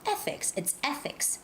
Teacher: It's the first syllable stress.